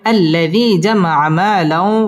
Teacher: তানবিনের বামে ওয়াও আসছে, ওয়াও ইদগামে বা গুন্নার হরফ, গুন্না সহ মিলিয়ে পড়তে হবে। আল্লাযী জামা মালাও, ওয়াও ঠোঁট গোল করে উচ্চারণ করতে হবে।